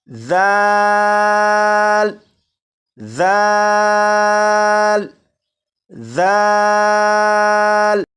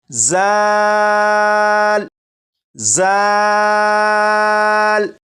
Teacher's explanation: इस हर्फ को सीटी की आवाज़ के साथ नहीं पढ़ेंगे, बल्कि सीटी की आवाज़ के बगैर पढ़ेंगे